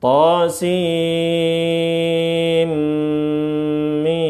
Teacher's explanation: Idgham bighunah. Kita masukkan nunnya ke mim. Kemudian dengan disertai ghunah. Dengung. Ditahan beberapa saat. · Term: idgham birunnah